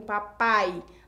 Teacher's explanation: na sílaba pai, o fonema vocálico I não é tão forte quanto o fonema vocálico A. Nesse caso, o I também é semivogal aí na papai.